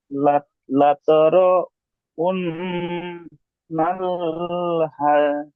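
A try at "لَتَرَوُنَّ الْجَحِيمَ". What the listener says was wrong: গুন্না করছেন, গুন্না হবে না। নুন লাম জবর নাল, একটু গুন্না হবে না, টান হবে না। লাতারা উন্নাল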